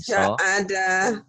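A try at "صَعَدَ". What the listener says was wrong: Iya, bukan sa ya. So ada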